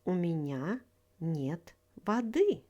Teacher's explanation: Воды is the genitive case of the word вода. Stress falls on the second syllable.